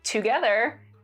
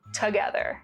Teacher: another remarkable feature of chicano english is that there's less vowel reduction